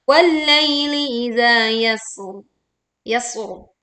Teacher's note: kita alirkan dulu suaranya di huruf sin sukun dengan suara yang tipis dan ada seruit tajam yang keluar, tapi ditutup dengan ro sukun dengan bacaan yang tebal.